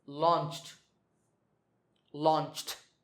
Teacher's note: the last sound is ch, which is voiceless